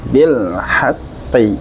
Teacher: Di sini ada huruf ha yang kita keluarkan dari wasdul halqi. Bil haqqi. Qi-nya tebal.